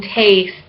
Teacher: E with a capital I, mid, front, unrounded, tense, like in taste